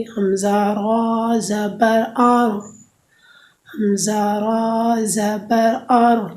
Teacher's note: زبان کی کروٹ کے آخر سے، زبان کی نوک تک کے حصے سے، جب وہ اوپر کے اگلے دانتوں کے مسوڑوں سے لگے تو اسے را ادا ہوگی۔